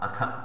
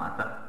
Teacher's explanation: మొట్టమొదటిది మహాప్రాణం అథ, రెండవది అల్పప్రాణం అత